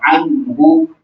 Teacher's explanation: یہاں نون ساکن کے بعد ہا ہے، ہا حروف اظہار میں سے، لہٰذا یہاں پہ اخفا نہیں ہوگا ، ہونا نہیں ہوگا، اظہار کر کے پڑھا جائے گا، عنہ